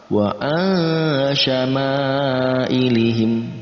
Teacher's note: Kemudian ada nun mati bertemu dengan shin, masuk dalam kategori ikhfa, kita baca dengan samar